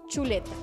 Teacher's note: Ch. Africada, palatal, sorda